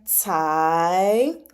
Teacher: for the C, you're going to pronounce it like TS.